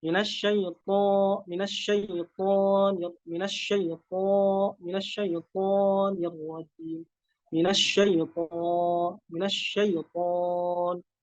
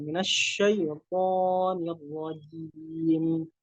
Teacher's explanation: huruf to itu tidak ada amal dari bibir. Karena makhrajnya itu murni dari lidah, jadi tidak ada amal pada bibir. Kecuali kalau misalkan to-nya harokatnya dhammah.